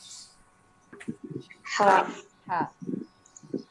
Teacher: Sifat lazimnya hamas ya. Jadi keluarnya ada hembusan nafas sedikit atau berdesis.